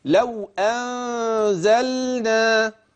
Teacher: في النون اللي قبل الزاي في اخفاء